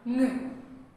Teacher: When we make this sound, it has to make through our vocal cords, so it vibrates, so it is voiced. The soft palate falls, drops, allowing or letting or permitting the air passes through the nose instead of the mouth. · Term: velar nasal sound